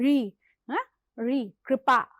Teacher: यह आपकी जीभ थोड़ा ज्यादा पीछे की तरफ जाती है तब उसका उच्चारण होता है। ऋ हैं ऋ कृपा।